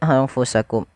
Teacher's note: jelas syafawi berkaitan dengan bibir kita dari kata syafah bibir sehingga huruf mim itu kan makhrajnya daripada bibir kita sehingga suara mimnya ini kita Jelaskan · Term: izhar syafawi